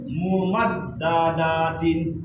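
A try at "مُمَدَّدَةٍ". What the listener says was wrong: দা একটু লম্বা হয়ে গেছে মুমাদ্দাদাতিন তারপরের ওয়ার্ড লম্বা হয়ে গেছে আবার বলুন ইয়াশাক্কাকু তারপরের ওয়ার্ড আরো স্লো তারপরের ওয়ার্ড আবার বলুন তারপরের ওয়ার্ড ইয়েস তারপর নুনের উচ্চারণ সিনের উচ্চারণ না বা সাকিন কলকলা হয় কিন্তু তাসদিদে না সেব তাসদিদে হবে না বা যদি সাকিন হয় তাহলে কি হয় কলকলা হয় সিন বা জবর সেবে কিন্তু এখানে বা তো সাকিন না বার উপরে তাসদিদ মানে বা মুশাদ্দাদ সেব তারপর বায়ের উচ্চারণ লম্বা হয়ে গেছে পায়ের নিচে কয় জেড এক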